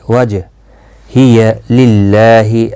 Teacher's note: اللہ کا لام زیر کی وجہ سے باریک پڑھا جائے گا، اس کے اوپر کھڑی زبر بھی ہے، 1 الف کی مقدار کے برابر کھینچ کر پڑھا جائے گا۔